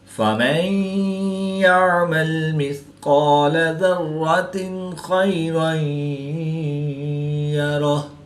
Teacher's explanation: قاف حروف مستعلیہ میں سے ہے تو اس کو پورا یعنی موٹا پڑھیں گے